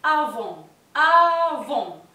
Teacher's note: la S final tampoco se pronuncia. Pero atención, porque acá tenemos la liaison.